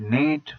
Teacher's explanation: front close unrounded vowel